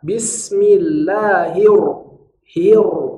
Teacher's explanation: Karena shaddah pada ro harus terdengar tebal. Jika dibaca sebagai bismillahirro, maka bunyi shaddahnya tipis sedangkan vokalnya tebal. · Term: ro tebal